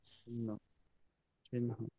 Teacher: এখানে হটা আছে আগে, নটা আছে পরে, কিন্তু উচ্চারণের ক্ষেত্রে নটা আগে আসবে, হটা পরে যাবে।